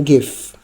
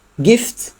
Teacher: kalau give itu ada getaran di tenggorokan, kalau gift tidak ada getaran.